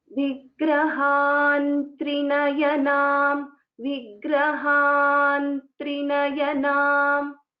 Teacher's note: So there will be a nakara which will be replacing the anuswara.